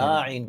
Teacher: نستعین اس طرح بھی پڑھتے ہیں، اور میں نے خصوصاً انڈیا میں جب گیا سفر پر تو بعض ائمہ کو سنا نستعین پڑھتے ہیں، لمبا کر دیتے نستعین، یعنی عین کے مخرج کی کوشش میں وہ تا کو کھینچ دیتے ہیں